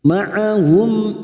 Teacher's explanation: mim sukun dibaca jelas Idhar syafawi karena bertemu Hamza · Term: idhar safawi